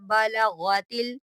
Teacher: गैन भी मोटा पढ़ा जाता है